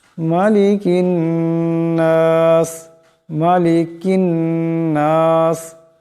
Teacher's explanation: ছোট কাফ আওয়াজটাকে বড় কাফের মতন গলা থেকে আনা যাবে না